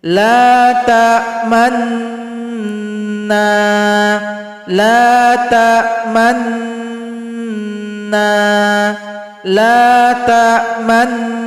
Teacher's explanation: kita monyongkan di tengah gunnah. Jadi bahasanya sama dengan SMS, senyum monyong senyum. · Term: ishmam